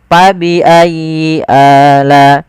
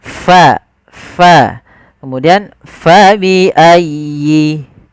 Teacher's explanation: ada angin yang dikeluarkan, karena fa salah satu sifatnya sifat hamz, yaitu mengalirnya nafas kita